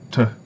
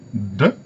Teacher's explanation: Il y a un voisement, c'est-à-dire que les cordes vocales vibrent en même temps qu'on produit le son